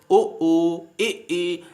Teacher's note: उच्चारण ऐसा जिनमें मुख का द्वार सकरा रहता है, पतला रहता है, छोटा रहता है। आधे से भी बहुत कम रहता है। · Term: समवृत स्वर